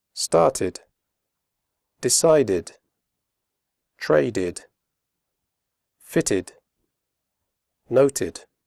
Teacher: After d and t, the final ed is pronounced id, as in did.